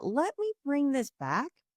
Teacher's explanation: Notice how I almost get a little bit higher pitch as well.